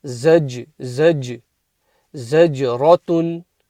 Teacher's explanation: Zaj bounces the jim